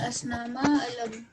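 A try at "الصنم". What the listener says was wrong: If you say al-asnama, it is plural. There's just as-sanama. As-sanama.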